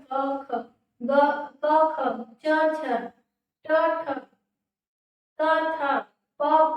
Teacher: अघोष वर्ण जब हम इनका उच्चारण कर रहे हैं क, ख, ग, क, ख, च, छ, ट, ठ, त, थ, प, फ, तो इनके उच्चारण में वाइब्रेशन नहीं हो रहा है, इन्हें हम अघोष वर्ण में रखेंगे